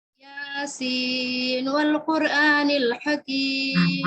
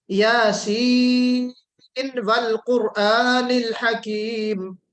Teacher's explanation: اظہار کرتے ہیں نا نون پہ، یعنی ہم ادغام ناقص کی طرح نہیں پڑھتے. ہم یاسین والقرآن نہیں پڑھتے.